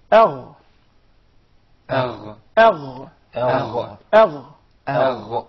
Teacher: So adna al-halq, the nearest part of the throat, the nearest to the mouth, is the makhraj and the articulation point for 2 letters, the ghayn and the kha. So the ghayn comes from the closest part of the throat to the mouth